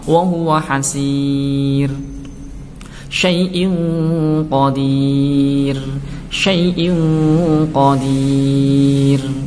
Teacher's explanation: ro yang hidup seperti ini dan didahului oleh ya sukun, kemudian sebelum ya sukun ada harokat kasroh dan dibaca waqaf, maka harus dibaca tipis.